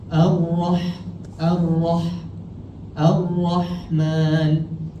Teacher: huruf Ha dia bersifat Hamas yang tadi saya cakap dia ada nafas ataupun angin keluar